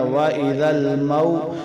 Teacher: واو زبر مو، یہ واو کون سی ہے، واو لین ہے، واو ساکن سے پہلے زبر تو یہ واو لین ہے، تو اس کو ایک الف مقدار سے بھی کم لمبا کریں